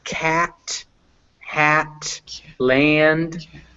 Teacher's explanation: it's at the front of your mouth, but you open up to say it